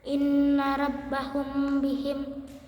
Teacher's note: Ikhfa syafawi yaitu apabila mim mati bertemu dengan huruf ba maka dibaca sedikit dengung.